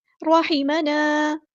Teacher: रॉ हमारा heavy letter है पूरा अदा करेंगे। हा को मुस्तहलक यानी मिडल थ्रोट से अदा करेंगे। अलिफ मद आ गया तो मद असली करेंगे।